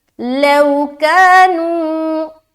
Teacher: واو ساکن اس سے پہلے زبر، لو نرمی کے ساتھ جلد ادا کریں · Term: واو لین